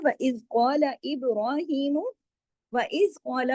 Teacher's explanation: وَإِذْ قَالَ میں قاف موٹا پڑھا جائے گا۔